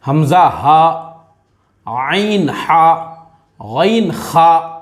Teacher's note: ये 6 क्या 6 हरूफ हलक में से निकलते हैं